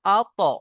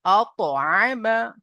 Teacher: তো তোয়াকে আমরা কলকলার সাথে পড়বো আত, এইভাবে আত আইমা।